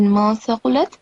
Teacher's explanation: So the noon sound, it is supposed to be hidden, and I think you said ma thaqulat, but the second time you just said man thaqulat.